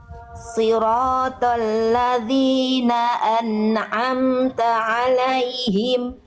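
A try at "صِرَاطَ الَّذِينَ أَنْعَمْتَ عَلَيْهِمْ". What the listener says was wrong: Oke, sip.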